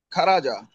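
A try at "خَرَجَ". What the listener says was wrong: এখনো খা বললে তো আমার চাকরি থাকবে না।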